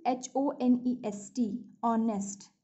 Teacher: But if I say if I say honest man, okay, so honest starts with honest, honest, but we pronounce it o sound comes, h is silent. All right, h is silent, and the initial sound coming from this word honest is o